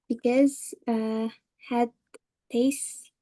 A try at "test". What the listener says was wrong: Test, not taste, right? Kalau taste itu rasa. Test.